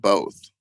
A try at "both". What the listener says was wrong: With an L in it? Are you gaslighting me?